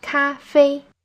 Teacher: Both parts of this word are in the first tone. Hold your voice high and steady.